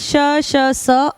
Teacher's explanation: श स अघोष हैं। महाप्राण लेकिन अघोष हैं।